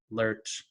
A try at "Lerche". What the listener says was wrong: Yes, Lerche. So we pronounce the E in the end. That's what's different from English.